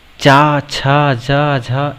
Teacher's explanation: और अगर चा, छा, जा, झा यहाँ को देखा जाए तो इन्हें बोलने के लिए वायु जो होती है वो हमारे तालु से स्पर्श होकर के निकलती है और हमारी जीभ तालु में ऊपर उठकर लगती है। इसीलिए इन्हें तालु व्यंजन कहते हैं।